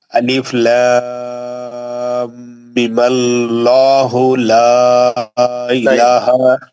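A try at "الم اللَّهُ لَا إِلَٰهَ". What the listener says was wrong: غنہ دونوں صورتوں میں رہیں گا. آپ روکو بھی ملا کے بھی پڑھو. بیچ کا غنہ کرنا ہی کرنا ہے. وہ آپ نہیں کر رہے ہیں.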